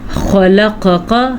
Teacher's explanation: خا کو بھی پر پڑھنا ہے، قاف کو بھی پر پڑھنا ہے، اور عین کے مخرج کا دھیان رکھنا ہے۔